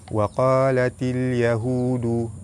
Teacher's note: Alif lam bertemu dengan ya, alif lam qamariyah, lam dibaca jelas.